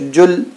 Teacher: लाम हरूफ़ क़लक़ला में नहीं आता लिहाजा यहाँ पर क़लक़ला नहीं करेंगे, यानी मखरज को टक्कर खाकर अलग नहीं करेंगे, पढ़ते ही रुक जाएंगे।